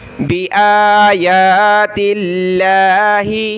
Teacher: الف کی لمٹ میں کھینچیں گے، کھڑا زبر ہے دونوں پر، لفظ اللہ سے پہلے تا پر زیر ہے تو لفظ اللہ کو ہم نے باریک پڑھنا ہے